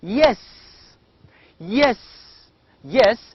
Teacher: again this is a voiced palatal sound